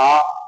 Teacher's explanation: आ तो यानी लंबी ध्वनि निकल रही है। पीछे से आ रही है।